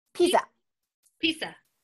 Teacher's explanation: So it's not the hard Z sound. It's just kind of like an S. · It's still like slight Z sound in it, but maybe it's much lighter than the English sounding.